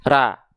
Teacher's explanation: Vokalnya masih A karena kita belum mengangkat bagian pangkal lidah kita ke atas